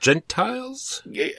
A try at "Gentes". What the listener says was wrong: There's no L, so it's not Gentiles. Well, I mean, I suppose it is about Gentiles, but it's pronounced Gentes, apparently. That's the Latin. That's the Latinist pronunciation.